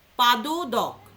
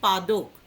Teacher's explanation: দ, দ দুটো ছিল, একটা দকে আমরা বাদ দিয়ে দিলাম, দিয়ে সেখানে করে দিলাম পাদোদক। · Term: সম অক্ষর লোপ